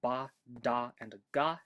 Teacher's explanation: you might vocalize or not at different points during this stage in vocalized plosives like in the English ba da and G sounds we vocalize while we're still building up pressure